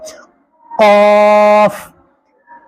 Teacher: कॉफ, जुबान की जो जड़ है हलक की तरफ बिल्कुल लास्ट में, एक तो जुबान की नोक के सामने, एक बिल्कुल हलक की तरफ जो जड़ है उस जड़ वाले हिस्से को ऊपर तालवे में लगाओ, बिल्कुल जैसे गला घुट जाता है उस वक्त की जो सूरत होती उस तरह अदा किया जाएगा।